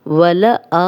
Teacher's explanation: حمزہ پہ کھڑا زبر ہے، 2 حرکات لمبا کریں گے